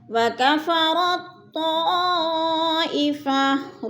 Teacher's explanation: را کو طا کے ساتھ جوڑ کر پڑھیں گے، درمیان والا تا نہیں پڑھا جائے گا، یعنی ادھر ادغام ہو رہا ہے۔